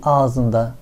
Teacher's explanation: ağız sözcüğündeki ı sesi düşerek ağzında olmuş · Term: ünlü düşmesi